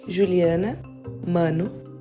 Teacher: pode pronunciar de outra maneira, sem fazer a nasalização